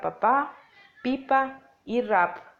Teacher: un acercamiento total de los labios, los cuales se cierran por un momento y crean una pequeña obstrucción de aire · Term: labiales